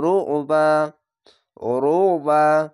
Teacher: আইনটিকে মোটা করে গলা চিপে পড়বেন।